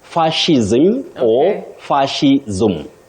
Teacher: but you don't say S, you say sh, fascism or fascism.